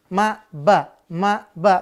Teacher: Kenapa? Karena mim dan ba harfani, dua huruf yang keluar dari kedua bibir. Ma, ba. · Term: Syafawi